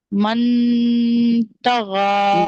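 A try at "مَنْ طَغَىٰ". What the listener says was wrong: नहीं, मन नहीं पढ़ना, मन तगा, मन तगा, जबान ऊपर नहीं लगाना है।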